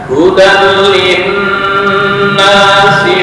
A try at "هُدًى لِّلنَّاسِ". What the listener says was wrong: masih buru-buru ini ditahan dua ketukan